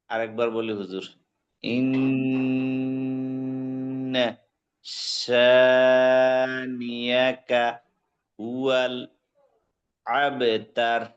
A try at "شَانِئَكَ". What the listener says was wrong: শানি আকা হামজাটা একটু পাতলা হবে, একটু পাতলা হবে, একটু সুন্দর হবে।